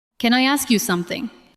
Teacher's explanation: Can I ask you something? The words can, I, and ask move together.